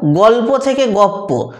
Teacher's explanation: লটাকে পাল্টে দিয়েছে জীব, পয়ের জায়গা থেকে উচ্চারণ করে দিয়েছে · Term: সমীভবন